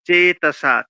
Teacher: চেতসা, চেটা একারটা দীর্ঘস্বর আর সাটাও দীর্ঘস্বর